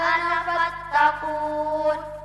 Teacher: Nah, ini ayat gharib ya. Tulisannya ana harusnya panjang tapi dibaca pendek